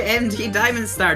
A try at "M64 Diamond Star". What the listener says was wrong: He definitely contributed so you could say his name wrong. It's M64 Diamond Star, not MD Diamond Star.